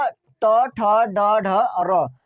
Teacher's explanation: जहां पे आपका तालू है उससे थोड़ा और पीछे जाके लगेगा आपका जुबान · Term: मुर्धा